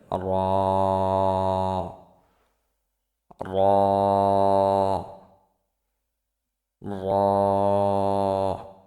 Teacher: র জিহ্বার আগার পিঠ তার বরাবর উপরের তালুর সঙ্গে লাগিয়ে উচ্চারিত হয়